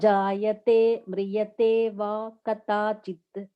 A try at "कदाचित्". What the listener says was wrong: I'm hearing it as katachit, but it is kadachit.